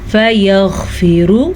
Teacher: غین کے مخرج کو واضح کر کے پڑھیں اور پر پڑھیں